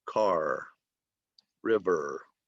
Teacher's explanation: Okay, so some people in some parts of the United States pronounce the final R a little bit differently, but I would say most speakers of American English use the rhotic R at the end